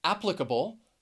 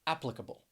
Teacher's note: It is an unstressed vowel sound, and it really just sounds like So when I say applicable, the schwa, you hear that in the third and the fourth syllable